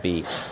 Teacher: the pronunciation of the word be this is a sound that's created by taking the body of the tongue moving it forward and high as if you were going to make e then you start making e and you move